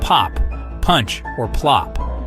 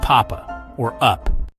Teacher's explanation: it's considered a bilabial sound which means it's made using both lips